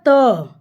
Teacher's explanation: मुंह से हवा जो होती है वह कम निकलता है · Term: अल्प प्राण